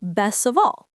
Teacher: example the phrase best of all sounds like best of all the t disappears because the next sound is soft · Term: connected speech